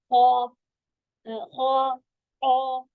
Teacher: तफहीम का कायदा, इसको कैसे करा जाता है, जबान के पिछले हिस्से को नरम तालू की तरफ उठाया जाता है, यानी जड़ ऊंची हो जाती है जबान की